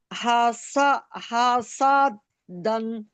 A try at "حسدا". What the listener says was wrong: دن کیوں دال پر دو دو بنے.